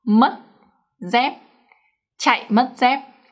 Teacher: the up tones are pronounced quite short